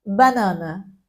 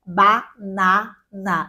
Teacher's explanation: A gente não percebe, mas a gente fala pelo nariz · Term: nasalizar